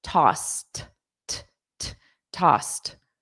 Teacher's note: The e d is pronounced as a soft t.